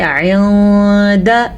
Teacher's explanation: جیسے کہ لکھا ہوا آئندہ، ہم اسے پڑھیں گے آئندہ، اس میں غنہ بھی ہوگا کسی حد تک. بہرحال ہم نے نون کی آواز کو چھپانا ہے اور غنہ کرنا ہے تو ہمارا اخفا بہترین طریقے سے ادا ہو جائے گا.